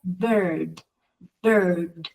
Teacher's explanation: no digo la palabra sino que solamente digo el sonido digo la lengua en este sonido es como que hace un Rolling es como que se va para atrás cerca del paladar como que la la la pego en el arriba Exacto después